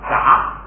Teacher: 低调不变，还是2声，只变成不送气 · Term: 低调不送气